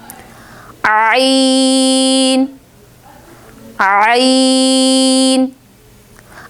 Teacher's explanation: عین کو بھی ہم نے ہا کی طرح حلق کے درمیان والے حصے سے ادا کرنا ہے